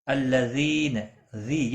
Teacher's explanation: یا مدہ ہے، ایک الف کے برابر کھینچ کر پڑھیں گے